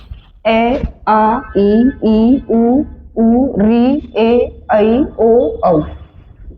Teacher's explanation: तो निर का अर्थ होता है नहीं। अर्थात वे स्वर जिनके उच्चारण में नासिका का प्रयोग नहीं होता। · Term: निरनासिक स्वर